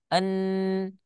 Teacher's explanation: ketika kita ucapkan en, pasti lidahnya akan menempel ke bagian langit-langit atas, ya. Dia tidak bergerak, tetapi suaranya bisa keluar. Nah, itulah disebut dengan tawasut di antara rokhoa dan syiddah.